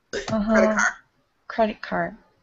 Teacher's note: We're not even really even saying card. We're almost just saying the word car because we care about it that little.